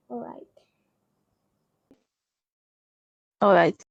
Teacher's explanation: British and American English right might have the rising tone but for Nigerian English uh a More Level tone on the right